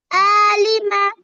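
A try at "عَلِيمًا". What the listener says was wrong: আলিমা, টান হয়ে গেছে। আলিমা, আলিমা বলেন।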